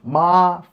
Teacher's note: first tone ma 5-5